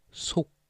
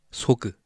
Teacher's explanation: Make sure you drop the G sound at the end.